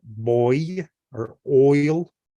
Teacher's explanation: Then there's a oi as in boy or oil, right? It's like a very open O.